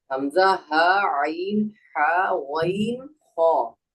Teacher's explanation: ایک ہا جو ہم کو نارمل پڑھنا ہے اور ایک ہا جو ہم کو حلق سے پڑھنا ہے. حمزہ ہا عین کیا ہے اس کے بعد ہا حلق سے اس کو حلق سے پڑھیے. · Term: حروف حلقی